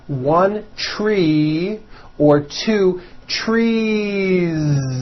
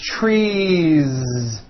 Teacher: you continue the voicing throughout the whole word and add on a voiced Z